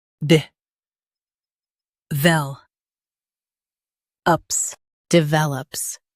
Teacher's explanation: Emphasize vel and soften ops.